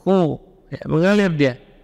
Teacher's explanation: tempat keluarnya huruf kha itu min adnal halqi, ujung tenggorokan.